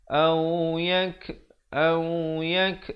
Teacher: ada hamasnya bunyi kaf.